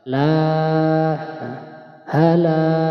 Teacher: ketika ada huruf alif jatuh setelah harokat fathah dan la-nya dibaca panjang satu alif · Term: mad tabi'i